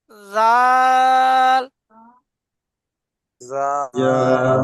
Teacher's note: জিভের আগা সামনের উপরে দুই দাঁতের আগার সাথে।